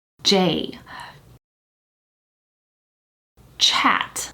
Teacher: pronounce english affricates when you say like j or chat it starts off with the lips protruding a little bit i'm exaggerating a bit here but look at my lips j